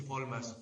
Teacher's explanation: el puertorriqueño va a transformar la R que precede a una consonante en L